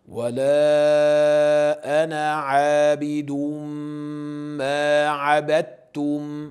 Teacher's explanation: bu yerda o'sha ana deya faqatgina bir harakat bilan o'qiladi